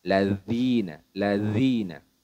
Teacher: makhrajnya huruf dalal ini teman-teman yaitu ujung lidah bertemu dengan ujung gigi seri bagian atas